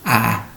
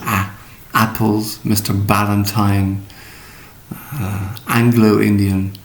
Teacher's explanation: Drop your jaw a little bit, A, to make it an open, rounded sound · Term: diphthong